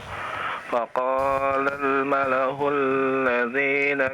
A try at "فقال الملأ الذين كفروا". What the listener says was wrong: lamnya jangan terlalu lama.